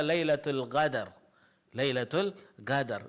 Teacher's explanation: Contohnya, dan ini masuk ke bagian kesalahan berikutnya, yaitu khaltu sautiha bil ghain, mencampur bunyi suara huruf qaf dengan huruf ghain, sehingga mirip dengan huruf ghain.